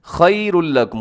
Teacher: खैरुल लकुम में इदगाम हो रहा है, इसे खैरुन लकुम नहीं पढ़ना आपने